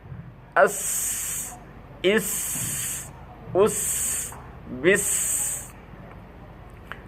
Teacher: জিহ্বার আগা সামনে নিচে দুই দাঁতের আগের সাথে লাগাইয়া শিস দিয়া